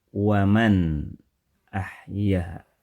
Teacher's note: nun sakinah, nun sukun, nun mati pada kata waman ahyaha dibaca dengan jelas, terdengar jelas bunyi n-nya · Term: izhar